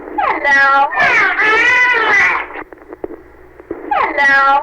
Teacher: First, listen to this segment with the idea that the dolphin is mimicking the girl's hello. He is drawing it out and using several vowels, which may be present in short form in the girl's presentation.